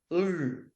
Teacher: இந்த ள்ளும் ள்ளும் நாங்கள் மருங்கொலி என்று சொல்லுவோம் இரு மருங்காலும் காற்று வெளியேறும் இப்படித்தான் நாக்கு தொட்டுதல் என்றால் இந்த பக்கத்தாலும் இந்த பக்கத்தாலும் காற்று வெளியும் இதை